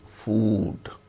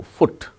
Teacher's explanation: when the word ends with D sound, then it is elongated, food. When the word ends with T sound, it is not elongated.